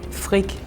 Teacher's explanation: I can hear that is saying the r in throat a lot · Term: the R in their throat